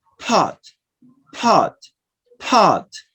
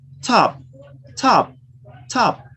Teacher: And it depends on the environment or the position they appear. The pa with aspiration appears at the beginning of words. · It's that phoneme, the same phoneme, but we change this phoneme physically. The first is produced with aspiration, and the second is produced without aspiration. And it depends on the environment or the position they appear.